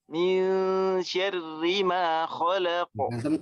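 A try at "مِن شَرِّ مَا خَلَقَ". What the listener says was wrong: Antum jangan miring-miring, antum setengah miring kayaknya fathahnya. Syari di syel. Jadi fathah jangan miring ke imala ya.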